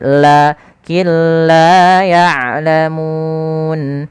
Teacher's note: Apa yang dimasukkan di sini adalah bunyi suara nun kepada huruf lam sehingga suara nunnya hilang secara kamilan, kita namakan dengan idgham kamil. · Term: idgham bila gunnah